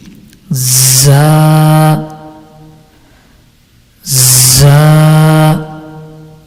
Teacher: And now the Mkhraj of letter Za, Za is pronounced when the tip of the tongue touches the edge of the lower two front teeth and lightly touches the edge of the upper two front teeth